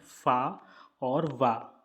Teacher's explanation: दंतोष्ठय से उच्चारित होने वाले व्यंजन कौन से हैं? फ और व।